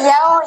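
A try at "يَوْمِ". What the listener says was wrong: Dalam bahasa Arab tak ada huruf O. Dia ada huruf U.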